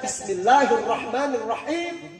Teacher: Tapi kalau kita makhraj kita salah baca, yang harus dibaca dengan ha kecil, tapi jatuh huruf kita kepada huruf kha